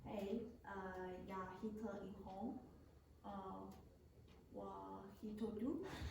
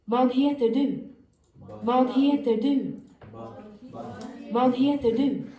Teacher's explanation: You're pronouncing w instead of v, and Swedish people would not have that problem.